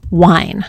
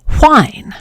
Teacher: for some English speakers the second word, the one that's spelled with a wh has a voiceless sound at the beginning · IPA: ʍaɪn